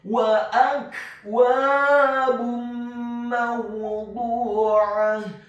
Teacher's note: Selanjutnya huruf ba-nya dibaca tipis dengan harokat dhammah tanwin bertemu dengan huruf mim yang fathah. Hukum bacaannya adalah idgham bil gunnah, memasukkan dengan dengung.